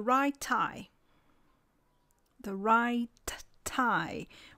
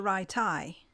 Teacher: this pause before the plosive gives us the name of this feature delayed plosion